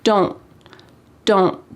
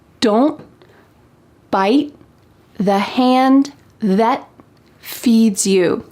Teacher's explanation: My tongue is at the top of my mouth trying to make that T shape, but there's no puff of air that comes out. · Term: stopped T